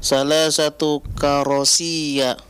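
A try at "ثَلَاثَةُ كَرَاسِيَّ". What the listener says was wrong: Ronya panjangkan. ya-nya jangan ditahan lama-lama. Karasiyah.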